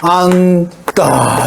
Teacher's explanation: 지읒은 탈락하고 니은으로 발음한다